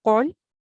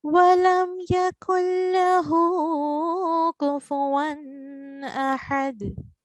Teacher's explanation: The first one is pronounced thick, qul. However, the last line is pronounced thin.